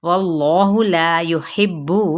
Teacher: یحب با کو سختی سے ادا کریں گے تشدید کی وجہ سے